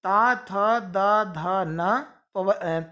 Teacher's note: ये इनका उच्चारण स्थान है दंत, इसलिए ये कहलाएंगे दंत्य वर्ण